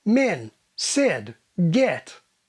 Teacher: an advanced RP form of the dress vowel is diphthongized in the direction of schwa